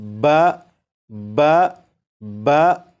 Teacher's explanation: اب یہاں پر دیکھیں، یہاں پر با اور با کے اوپر زبر ہے۔ اب یہاں پر با زبر با کو اس طرح پڑھیں گے کہ آواز ذرا بھاری ہو